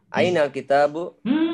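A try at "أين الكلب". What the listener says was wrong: Masa kitabu? Ini lam.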